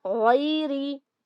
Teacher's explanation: गैन की आवाज को हलक से निकालेंगे, गैरी। इसको भी एक ही काउंट नरमी के साथ पढ़ा जाएगा, गैरी।